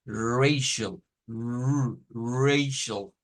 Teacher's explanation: Se le llama R aproximante y se hace siempre en el alvéolo.